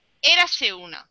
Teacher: se juntan las dos vocales se junta la e y la u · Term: encadenamiento